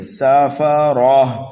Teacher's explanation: سین کو سینٹی کی آواز دے کر کے پڑھیں گے لیکن جلدی پڑھیں گے اس لیے کہ یہ متحرک ہے، فا بھی متحرک ہے، را بھی متحرک ہے اور تنوین کو بھی جلدی پڑھتے ہیں، ٹھیک ہے۔ را کے اوپر زبر ہے اس لیے را کو پر پڑھیں گے